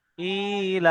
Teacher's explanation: খাড়া জের ইয়া মাদ্দা সমতুল্য তাই একে একালি পরিমাণ টান দিয়ে পড়তে হবে। তো বানান করে দেখাচ্ছি, দেখেন হামজা খাড়া জের ই, লাম খাড়া জবর লা, ইলা।